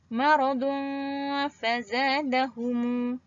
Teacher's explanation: Hukum ikhfa berlaku apabila tanwin bertemu dengan huruf fa. Bacaannya perlu dengung.